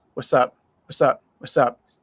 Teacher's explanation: You don't hear the T sound. It's just what's up?